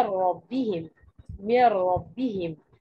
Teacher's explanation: فين صوت النون؟ مش موجود. فين غنة النون؟ مش موجودة. · النون عندي هنا مش موجوده. ليه؟ لان هي دخلت دخول تام ودخول كامل في الحرف التالي لها. ان كان الحرف التالي لها نون فانا بأضع لساني في مخرج النون، ان كان الحرف التالي لها ميم فانا بأضع بعمل إطباق الشفتين لإصدار صوت الميم، إن كانت لام فبأضبط حرف اللام، إن كانت راء فبأضبط حرف الراء. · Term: الادغام الكامل, الإدغام الكامل